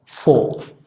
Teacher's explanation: Luego, AU, la tendencia es que suena O, prácticamente como nuestra O.